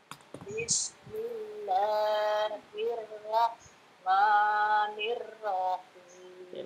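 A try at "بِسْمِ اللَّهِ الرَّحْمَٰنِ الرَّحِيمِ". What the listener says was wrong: Ra-nya ditebalkan ya. Bismillahirrahmanirrahim.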